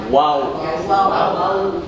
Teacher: Kalau wawu itu termasuk huruf bibir, huruf syafatain, 2 bibir yang bergerak tetapi dalam posisi bulat.